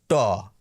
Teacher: আমি যদি আপনাকে বলি ট, আপনার কিন্তু সেই মূর্ধায় গিয়ে লাগছে না, কিন্তু ব্যাকরণ বইতে কিন্তু লেখা রয়েছে ওটা মূর্ধা থেকে উচ্চারিত হয়। · দক্ষিণ ভারত বাদ দিয়ে কেউই মূর্ধায় জিভ ঠেকিয়ে আর ওই মূর্ধন্য বর্ণগুলিকে উচ্চারণ করেন না।